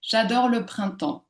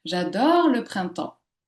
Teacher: la syllabe finale de mon mot phonétique est allongée ici et elle peut également selon la manière dont je souhaite prononcer mon énoncé euh porter de l'intonation.